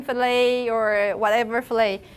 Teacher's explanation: you don't pronounce the final tea